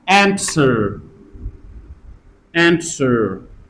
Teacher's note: a slight t sound, which is optional